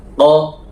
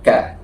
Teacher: Jadi bedanya qo dengan K. Qo agak ke dalam ka sedikit ke depan.